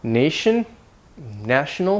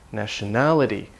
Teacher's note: the vowel changes, national, and then the stress moves, nationality